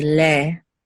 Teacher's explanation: And and I know that's how it's usually taught, that sere is le, but in let's say in Israel, they don't really emphasize the a. You would just say le. Okay, almost the same as Segol.